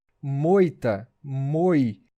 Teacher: Notem que o som do O é mais forte. O I é a semivogal.